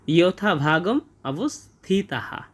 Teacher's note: এবং শেষে বাক্যের শেষে যদি বিসর্গ থাকে সেই বিসর্গার উচ্চারণের জন্য পুরো হয়ের মতো একটা সাউন্ড আসে এবং সেই বিসর্গার আগে যে বর্ণটা থাকে সেই বর্ণ যদি কোনো কার চিহ্ন বহন করে, এই বিসর্গ যে হ হলো, এই হ সেই কার চিহ্ন বহন করে, তাই এখানে হবে ইয়থা ভাগম অবস্থিতাহা।